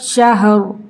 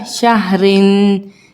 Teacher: वक्फ की सूरत में ये दो ज़ेर ओमिट हो जाएगी और हम रॉ को पुर पढ़ेंगे